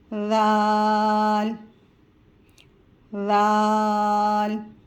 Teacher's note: ذال کو ہم اپنے مخرج سے پڑھیں گے، یعنی زبان کی نوک سامنے والے اوپر سامنے والے 2 دانتوں کے کنارے سے ٹچ کر کے پڑھیں گے، اور اس میں زا کی مشابہت نہیں ہونی چاہیے۔